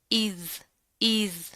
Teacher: इसको आपने जाल में सीटी पैदा नहीं करनी, नर्म हरूफ में से बारीक पढ़ेंगे